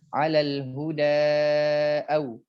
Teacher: Huda ada a di sini, maka dipanjangkan jadi 4 harokat. Kalau dia diam di situ, cicing di situ, misalnya berhenti di situ, maka 'alal huda tidak ada panjang lebih dari 2 harokat.